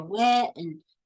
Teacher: she actually kind of drags out the e a little bit before she stops